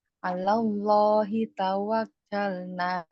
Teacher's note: Lam bertasdid ya. Sebelum lafuz jalalahnya huruf berharokat fathah, maka lam jalalahnya dibaca tebal.